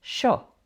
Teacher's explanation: But remember that in Argentina and Uruguay, they can pronounce it sho.